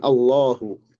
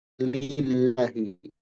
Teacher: Nah, tebal itu dibaca Allahu tipis lillahi.